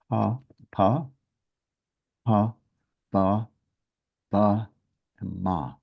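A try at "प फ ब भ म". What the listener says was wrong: Okay, I heard like 6 different letters. There was too many letters.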